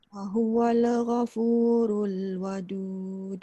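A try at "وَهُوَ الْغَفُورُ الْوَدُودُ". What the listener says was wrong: Jangan bunyikan lam tu qalqalah. Ni saya sebut sebab kita tengah sebut tentang qalqalah kan. Dia jangan wahuwal. Wahuwal ghafur.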